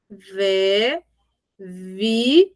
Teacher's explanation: o V é um assopro mais tremido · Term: som do V